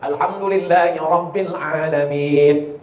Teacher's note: Rohnya mesti tafkhim tebal